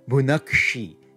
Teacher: to become bunach then it jumps up to bunak but then the sibilant now is going to retroflex itself